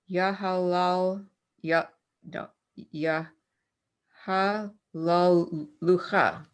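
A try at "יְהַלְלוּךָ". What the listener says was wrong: Close. You added an extra lamed. Yahalucha.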